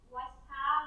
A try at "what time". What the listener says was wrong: No S.